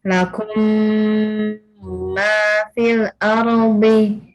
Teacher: Jadi huruf mim mim sukun ketemu mim itu harus didengungkan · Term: idgham mimi